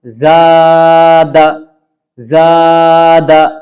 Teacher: دال پہ زبر ہے، اسی دال کو دیکھیے کتنا جلدی پڑھ رہے ہیں، لیکن زا کو مد کر رہے ہیں، کھینچ رہے ہیں۔ زا الف زبر زا، دال زبر دا، زاد، زاد۔